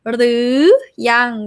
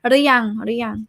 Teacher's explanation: หรือยัง rising tone หรือยัง conversational drop to high tone